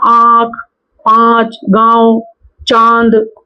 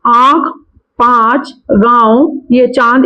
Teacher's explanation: अनुनासिक ध्वनियों में हवा मुख के साथ नाक से भी निकलती है